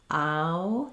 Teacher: So I'm moving from something more open and unrounded, ow, then I'm closing, it becomes less tense and more rounded. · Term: ow diphthong